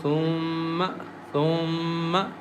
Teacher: mim has a shadda on it, so we recite with nasal sound as thumma, thumma.